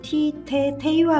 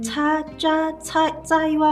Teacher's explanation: 해안 지역에서는 주로 티, 테, 테이와 같은 파열음으로 내륙 지역에서는 차, 짜, 짜이와 같은 마찰음으로 발음되는데